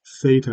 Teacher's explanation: theta, of course, starts with the th sound, that dental fricative, voiceless dental fricative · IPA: θ